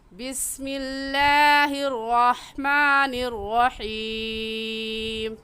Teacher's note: بسم اللہ میں لفظ اللہ سے پہلے زیر آ گیا، اس لیے اس لفظ اللہ کو باریک پڑھیں گے، اور را کے اوپر زبر آ گیا تو را کو پر یعنی موٹا کر کے پڑھیں گے، اور ہا حلق کے درمیان سے نکال کر پڑھیں گے۔